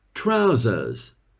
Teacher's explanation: British people call them trousers, but they don't pronounce the second R.